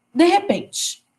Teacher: Também é uma pronúncia mais rápida. É como se fosse uma única palavra. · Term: aglutinação